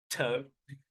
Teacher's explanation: a t has really firm closure between the tongue tip and the alveolar ridge on the roof of the mouth